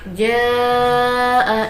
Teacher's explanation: bacaan mad wajib muttasil sebab mad bertemu dengan hamzah dalam satu kalimat yang panjangnya 2,5 alif atau 5 harokat.